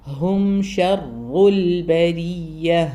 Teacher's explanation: റ ഹെവി ആണെന്ന് ഇരട്ടിപ്പിച്ച് പറയുകയും ചെയ്യണം